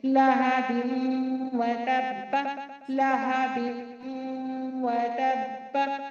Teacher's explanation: वाव को जल्दी पढ़ेंगे। ता को बा से मिलाकर पढ़ेंगे। बा को शिद्दत और सख्ती के साथ एक बार तन्हा पढ़ेंगे। · बा पर तनवीन, तनवीन के बाद हुरूफ यूमिन में से वाव आ रहा है तो यहाँ पर इदगाम में बा गुन्ना, इदगाम माल गुन्ना यानी इदगाम गुन्ना के साथ किया जाएगा। तनवीन को वाव से मिलाकर एक अलिफ के मिकदार गुन्ना करते हुए पढ़ेंगे। वाव को जल्दी पढ़ेंगे।